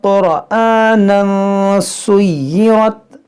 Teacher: तनवीन के बाद जो है हुरूफ इख्फा है, तो यहाँ पर इख्फा करेंगे